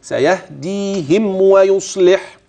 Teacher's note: فاحترس من عدم اطباق الشفاه جيدا والا ستخف منك الميم او تدغم في الواو